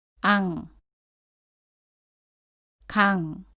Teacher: 응 으로 발음 하는데요 이때 이은 응 소리가 납니다 너의 뒷부분으로 입천장 뒷부분을 막고 공기를 코로 보내서 소리 냅니다